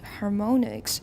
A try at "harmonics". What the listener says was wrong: Your stress was fine the first time. But how do we usually pronounce an O in isolation? It's got no final silent E, and it's not part of a digraph. It's not like OA, for example.